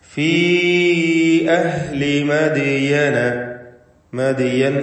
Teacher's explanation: ദാലിന്റെ സുക്കൂൻ ഖൽഖല സൂറ നൽകി ശബ്ദം ചലിപ്പിച്ച് വ്യക്തമാക്കണം.